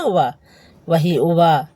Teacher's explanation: उवा का उवा बोलने पर दंत और ओष्ठ में स्पर्श होता है, इसीलिए इसे कहते हैं दंतोष्ठम